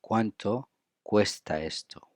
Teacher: We link cuesta and esto.